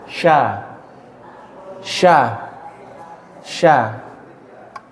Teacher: Tengah-tengah atau punggung lidah dengan langit-langit atas tapi gak nempel. karena gak nempel sehingga ada ruangan.